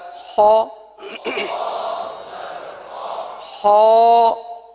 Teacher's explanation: خ حرف کو پر ادا کرنا ہے کیونکہ حروف مستعلیہ ہے